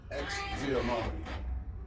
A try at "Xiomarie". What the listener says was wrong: Nah, it's Xiomarie. It's like C-O-M-R-E. No X. Just say C-O-Mari.